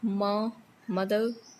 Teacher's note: Then ma sound, that is ma in English is nasal, voiced, and it is not aspirated